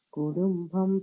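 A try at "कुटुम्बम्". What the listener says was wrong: It's Kutumbam, Ta, not Da. கிடையாது குடும்பம் கிடையாது தமிழ்ல சொல்ற மாதிரி குடும்பம் கிடையாது அது குடும்பம் இல்ல ta ta t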